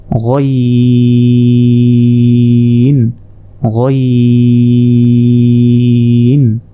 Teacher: হলকের শেষ ভাগ হতে গইন উচ্চারণ হয়,